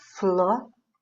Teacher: é a antepenúltima sílaba que foi acentuada, ou seja, é a tônica, é a mais forte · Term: proparoxítona